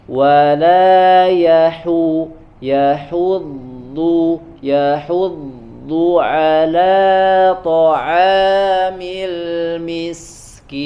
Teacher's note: Kalau di sini du-nya ya otomatis harus dimonyongkan kedua bibirnya ya, karena dia berharokat dhammah. Bahkan dari huruf ha-nya juga sudah manyun ya, sudah dhammah.